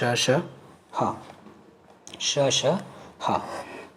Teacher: और अन्य वर्णों की अपेक्षा श, ह, स, इसमें आपका गर्म हवा अधिक समय ज़्यादा निकलती है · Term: ऊष्म व्यंजन